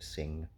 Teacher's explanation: velar nasal, which is the ng at the end of sing